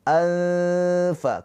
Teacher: ketika pengucapan anfa, nah gigi seri atas kita ujungnya nempel ke perut bibir bawah. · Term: ikhfa huruf fa